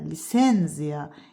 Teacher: Amma lisenziya sözündə lisenziya ikinci hecada olacaq vurğu.